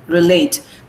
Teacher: relate is a verb. So we have stressed the second syllable